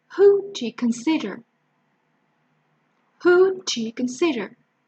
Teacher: Who and consider would be much more easily heard than do you.